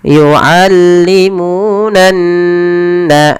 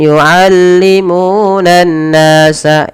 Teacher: ditahan dahulu ketika melafalkan nun berharakat tasydid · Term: gunah